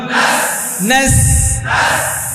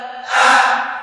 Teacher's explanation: জিব্বার আগা দাঁতের গোড়া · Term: সিনের আওয়াজটা